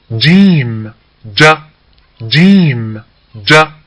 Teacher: നമ്മളെ നാവ് എവിടെ ടച്ച് ചെയ്യുന്നത്? അണ്ണാക്കിന്റെ മധ്യഭാഗത്ത് അല്ലേ? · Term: ജീമ്